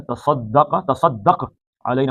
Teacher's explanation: سواد موٹا ہے اور کاف بھی موٹا ہے، تا پتلا ہے